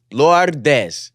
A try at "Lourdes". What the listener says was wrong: Why you rolling so many R's? It's Lourdes. Or if you actually want to roll the R's, it's Lourdes. Lourdes.